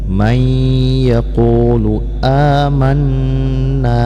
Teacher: nun yang bertasydid juga dibaca gunnah, ya. Jadi ini didengungkan dan ini didengungkan.